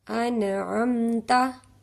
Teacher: इसे हम नून पे गुना नहीं करेंगे नाक में आवाज नहीं जाएगी